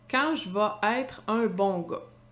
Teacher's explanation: c'est courant que le son est devient un a dans la langue plus relâchée.